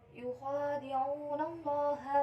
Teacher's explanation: Selanjutnya pada kalimat Allah yaitu terdapat hukum bacaan tafkim, cara bacanya itu dibaca tebal. · pada ayat yukhadi terdapat hukum bacaan yaitu mat tobi'i, cara bacanya itu dibaca panjang 2 harokat